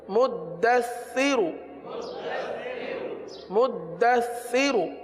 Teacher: سا میں سیٹی کی آواز نہیں آتی، سا میں زبان کا سرا اوپر کے دانتوں کے اندرونی کنارے پر لگتا ہے